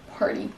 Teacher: Ça va peut-être vous perturber de ne pas entendre party avec un T. Donc les Américains vont vraiment changer ce T en D